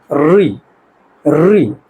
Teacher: अगर हम उच्चारण जब करेंगे तो जीभ में भी कंपन होगा, री। ठीक उसी तरह कंठ तालु, मतलब क्या, कहाँ पे टच होगा, कंठ और तालु। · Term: मूर्धन्य स्वर